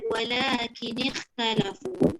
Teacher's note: Kha tu isti'la tapi dia tidak itbaq. Bermakna dia terangkat juga pangkal lidah, tapi adakah dia terangkat tengah lidah? Tidak.